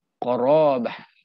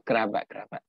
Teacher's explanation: dia ada bunyi i pepet kat situ. Bunyi e. Arab tak ada bunyi e.